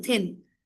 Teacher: देखो जीभ थोड़ी सी बाहर निकलती है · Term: th